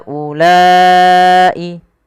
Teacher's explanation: Panjangkan huruf ha sepanjang 4 harokat dan panjangkanlah huruf la sepanjang 4 harokat pula atau 5 harokat untuk kedua-duanya. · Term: mad jaiz munfasil